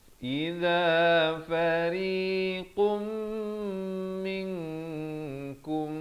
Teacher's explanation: Kum idhar syafawi jangan panjang terus masuk. Idza fariqum di sini masuk beserta dengung idgham bi gunnah dua harakat dari fariqun jadi fariqum. Fariqum min ikhfa hakiki dua harakat, kum ikhfa syafawi dua harakat.